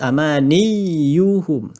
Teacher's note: waktu kita nak sebut tasydid ya, maka bahagian tengah lidah ni dia akan naik ke atas.